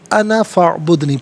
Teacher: انا میں یہاں پر الف مدہ تو ہے لیکن اسے کھینچ کر نہیں پڑھیں گے، انا فاعبدنی پڑھیں گے۔